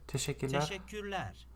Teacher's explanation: So that is like a SH sound, that S with like a thing under it.